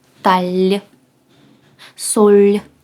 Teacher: якщо він стоїть знизу складу він пом'якшується набуває звуку ль